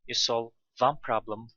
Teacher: one is the most stressed word here